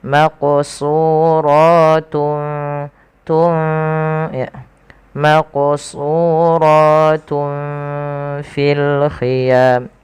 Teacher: Nah, ikhfa di tengah-tengahnya. Jadi nunnya tidak terlalu dibaca dengan jelas tapi dia disamarkan kepada huruf selanjutnya. Maka di sini samarkan huruf ta kepada huruf fa langsung.